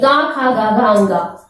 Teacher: कंठ यानी हम इनको गले के माध्यम से बोलते हैं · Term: कवर्ग